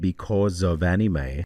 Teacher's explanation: this time he's actually kept the s to a zed.